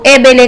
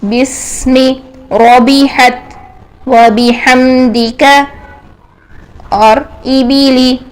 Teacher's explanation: بی کو بے نہیں کرنا ہے، اس کو بی ہی رکھنا ہے، ای کی ساؤنڈ میں لے کے آنا ہے